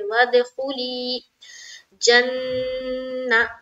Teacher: नून मुशद्दद का गुन्ना होगा, इसलिए कि नून के ऊपर शद है, ना नून के ऊपर फिर जबर की हरकत है, जबर को जल्दी पढ़े, थोड़ा भी ना खींचे।